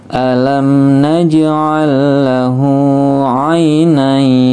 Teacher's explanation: Ainain, ain dibaca pendek, nain dibaca panjang ya. karena ini di tempat pemberhentian ya.